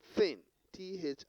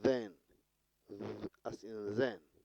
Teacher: a manner of pronunciation with a tongue tip between upper and lower teeth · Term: interdental